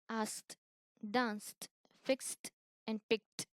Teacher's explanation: Here, when the root words end with these sounds like f, s, k, sh, ch, and th, past tense ending pronounced as th, it is a voiceless sound. That means if you put your hand on your vocal cord, you don't feel the vibration